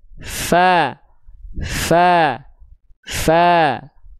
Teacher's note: Huruf fa punya sifat namanya adalah hams. Hams itu artinya adalah mengalir nafas. Udah pasti kalau huruf fnya tepat dilafalkan harus mengalir nafas.